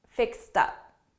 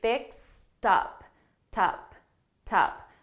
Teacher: because I have up, fixed up, and I have a T and a vowel sound, I'm going to transfer. I'm going to link these sounds together, and I'm actually going to say fixed up, tup, tup.